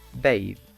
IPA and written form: beɪð (bathe)